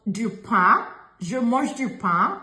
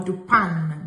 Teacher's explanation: We don't pronounce the letter N. We don't even pronounce it that way. It's nasal.